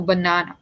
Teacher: the first syllable, ba, is short, but the next two syllables are stressed. They're long.